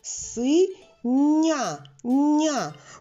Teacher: Ми чуємо м'який нь йому м'якість дала якраз літера Я